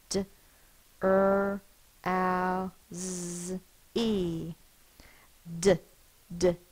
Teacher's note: my tongue is tapping behind my teeth